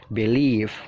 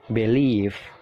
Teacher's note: Jadi penekanannya itu mengarah ke leave-nya ditekan ya. Jadi B-nya itu singkat aja.